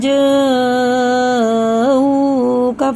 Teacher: سماعون للکذب اکالون للسحت فإن جاءوک فاحکم. دیکھیے جیم پہ مد ہے تو یہ حمزہ آ رہا ہے، تو یہ وہی چار الف کے برابر مد متصل ہے